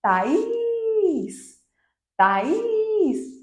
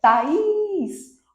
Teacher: Observem que eu segurei muito o is. Is. Essa sílaba que a gente segura mais tempo é a sílaba tônica.